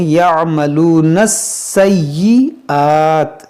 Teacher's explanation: سین مشدد ہے، ایک بار نون سے ملائیں گے اور ایک بار یا سے ملائیں گے. یا مشدد ہے، اس کو پڑھیں گے دو بار، سیئات.